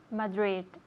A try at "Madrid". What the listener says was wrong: Okay, yes.